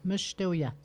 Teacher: le premier A se prononce comme un E. Mesh, ouais, les voyelles, des fois ils se prononcent pas, des fois ils se prononcent comme un E.